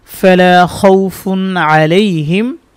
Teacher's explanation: খ ওয়াও সবর খাউ, ফা দুই পেশ ফুন, খাউফুন। তানভিনের পরে আইন আসছে, এখানে কোনো গুন্না হবে না, এটা হচ্ছে ইজহারের কায়দা হয়েছে।